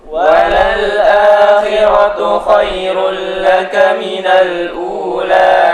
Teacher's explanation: bacaan a dibaca panjang 2 harokat